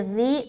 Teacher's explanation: سیٹی نما آواز نہ آئے، اگر سیٹی نما آواز آ رہی تو یہ حرف زال زا بن جائے گا